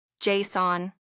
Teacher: The first part is loud J. And the second part is softer son. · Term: stress